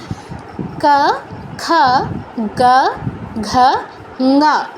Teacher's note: প্রথম যে পাঁচটা, এদের উচ্চারণ হচ্ছে কণ্ঠে। জিহ্বার ঠিক যে পেছনের অংশ, সেটা আমাদের কণ্ঠে স্পর্শ করে উচ্চারণ হবে এই পাঁচটা।